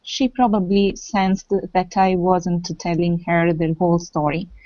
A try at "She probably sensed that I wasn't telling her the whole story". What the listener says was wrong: Nice. And really good pronunciation.